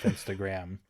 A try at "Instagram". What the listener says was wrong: you said that weird. Instagram. you put the wrong You put the wrong emphasis on the wrong syllable.